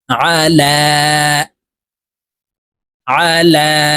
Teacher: দেখুন আইন জবর আহ আইন জবর আ লাম খারা জবর লা লামকে এক আলিফ টেনে পড়তে হবে কারণ লামের উপরে খারা জবর আছে